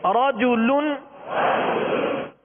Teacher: رجل، را پر زبر ہے، را کو کیا کریں گے؟ پر پڑھیں گے.